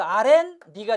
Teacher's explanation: 니은이 두 개 첨가돼서 아렌 니가 되죠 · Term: 니은 첨가